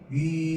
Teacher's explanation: 위 이렇게 발음하면 입술이 동그란 상태에서 멈춰 있어요.